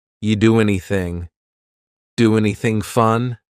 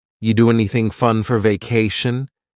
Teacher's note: then the next word anything we sometimes drop the A and we're going to push those two together because there's two n sounds side by side